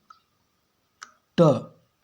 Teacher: जैसे ही बोलेंगे आप ना तो आपका जीभ पूरा मुड़ जाता है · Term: मूर्धन्य व्यंजन